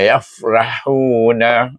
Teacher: ra alif dibaca dengan tebal